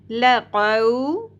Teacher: قاف پر پڑھا جائے گا. دو نقطوں والی قاف تالو کے نرم حصے سے ادا کی جائے گی